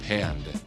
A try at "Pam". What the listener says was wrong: M. There's no D. It's Pam. P. M. M. No, there's just one M.